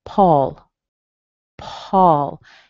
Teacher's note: in some regions, you'll hear more of this open O sound.